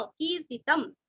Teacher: की दीर्घ, तीरस्व लास्ट में आधा म